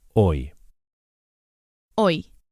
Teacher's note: As you can hear, as usual, the H is silent.